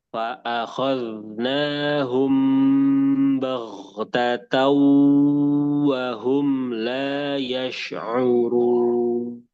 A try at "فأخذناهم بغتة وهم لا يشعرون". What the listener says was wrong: Ohnya tadi kurang alif. Bau tatau. Bau tatau. Nah, coba lagi.